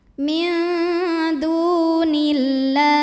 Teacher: nun dibunyikan samar-samar siap-siap ke dal disertai bunyi dengung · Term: ikhfa aqrab